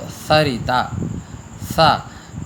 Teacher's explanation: ये सा दांतों के पास में जब हम जीभ को ले जाते हैं और उसे वायु निकलते हुए, तब ये शुद्ध उच्चारण होता है। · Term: दंत्य सकार